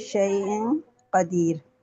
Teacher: قاف جو ہے حروف اخفا میں سے اس سے پہلے تنوین ہے، تو یہاں پر اخفا کریں گے